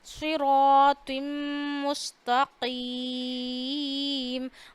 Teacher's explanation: मीम की आवाज़ नाक में ले जाइए और 1 अलिफ जितनी ठहराइए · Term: गुन्ना